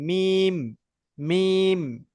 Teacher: আর মিমটা বা উচ্চারণ হয় দুটো ঠোঁটের শুকনো অংশ দিয়ে,